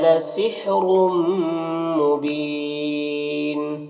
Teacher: यहाँ पर रॉ के ऊपर 2 पेश है तो ये रॉ को पूर्व पढ़ेंगे और ये तनवीन के बाद मीम है, हुरूफ युमिन में से, तो तनवीन को मीम से मिलाकर गुन्ना के साथ में पढ़ेंगे। इसको इदगाम नाक़िस कहते हैं।